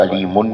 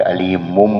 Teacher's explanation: اگر علیم پہ رک جائیں گے تو پھر تو میم کی آواز ویسے ہی آ رہی ہے، اور اگر اس کو ملا کر پڑھیں گے تو علیمن ہے، تو یہ علیمن ہے تو آخر میں آواز نون کی ہے، اور اس کے بعد با ہے، تو نون کی آواز میم کی آواز میں آپ تبدیل کریں گے، اس کو علیمن نہیں پڑھیں گے، علیمم پڑھیں گے۔